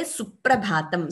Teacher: you're getting a double P sound here before Pra. So that is the Dvitvam rule.